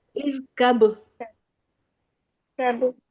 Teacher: کاف کو قاف کی طرف مت لے جائیے، ٹھیک ہے، کاف کا مخرج کافی دور ہے